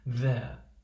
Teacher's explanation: we're starting with a short value and we're blending into the lax schwa